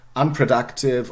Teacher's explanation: there is the stress directly on the un. Okay, we would expect, of course, no schwa here.